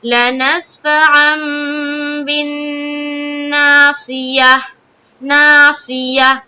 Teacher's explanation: صاد کو منہ بھر کر بولنا ہے کیونکہ صاد موٹے حروف میں سے ہے